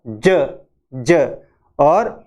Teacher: और उसके बाद में ज ज ज ज ज जब हम बोलते हैं तो प्लेटो एल्वियोलर यानी थोड़ा सा जुबान है वो मसूड़े की साइड में जाती है और आवाज आती है ज ज।